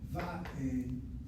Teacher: you have two syllables, but the emphasis is on the first one. That's why the va will go va.